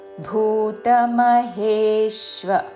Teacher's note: మహా ప్రాణాక్షరము భూ దీర్ఘముతో